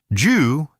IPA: dʒ